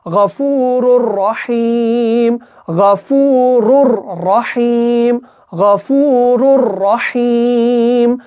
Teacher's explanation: ادغام ہوگا لیکن گنہ کے بغیر ہوگا، اور وہاں پر ہمیں اس کو کھینچنا نہیں ہے بلکہ ادغام کامل کرنا ہے